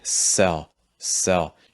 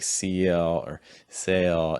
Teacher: you don't want to make the vowel change at all as you're saying that you know it doesn't need to be like cl or sale